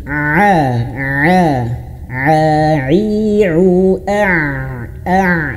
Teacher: Huruf ain itu berada di tengah tenggorokan. Jadi agak ditekan, agak di agak disempitkan. ditekan bagian tenggorokan tengah ini.